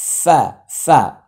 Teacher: দাঁতগুলো ঠোঁটে লেগে যাচ্ছে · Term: 14 নম্বর মাখরাজ